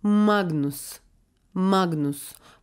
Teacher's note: çift ünsüzü daha çok Nazal bir ses verecek